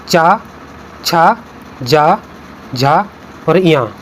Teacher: च वर्ग च, छ, ज, झ और ञ। इसके साथ-साथ य और स ये सभी वर्ण तालव्य से बोले जाते हैं